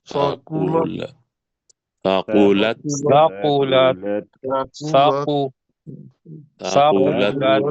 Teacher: سے کو پڑھنا ہے دانتوں کے اندر زبان دے کے